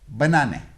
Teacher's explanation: the first and third syllables are unstressed and the middle syllable is